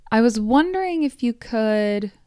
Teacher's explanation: The pitch is generally higher, which is a common way to show uncertainty or deference or respect in English.